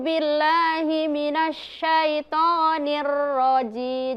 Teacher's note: huruf ro itu bukan huruf bibir, tapi huruf yang keluar dari ujung lidah